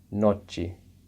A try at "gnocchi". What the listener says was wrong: Good tries. The G in the beginning of the word is silent. However, there is a little bit of a Y sort of sound.